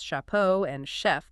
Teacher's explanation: Only this time, centuries of phonetic laziness in France had softened that hard K sound. The point of articulation in the mouth literally moved, relaxing into a soft sh sound.